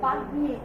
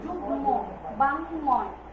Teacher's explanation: মটা যে বর্ণের সাথে যুক্ত হয়েছে সেই বর্ণটারই উচ্চারণ হয়েছে, ঠিক আছে? সেই বর্ণটার উচ্চারণ হয়েছে, মটারও উচ্চারণ হয়েছে। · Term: দ্বিত্ব উচ্চারণ হয় না